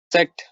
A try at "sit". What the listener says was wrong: Set হয়ে গেলে SET হয়ে যাবে. SIT is sit. Teeth is pressed the day. SET, sunset, that is set, set.